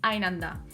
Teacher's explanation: Оно произносится слитно, без твердого приступа.